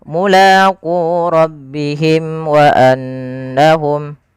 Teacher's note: berarti dia berkenaan dengan apa namanya berkenaan dengan bibir kita maka karena makhraj daripada huruf mim di bibir maka suara mimnya sini harus dijelaskan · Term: izhar syafawi